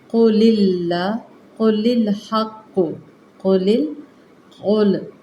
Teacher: قاف مستعلیہ ہے، آپ نے پر پڑھنا ہے